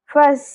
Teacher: فس سین حروف صفیریہ میں سے ہے یعنی کہ سین کی ادائیگی میں سیٹی کی آواز آئے گی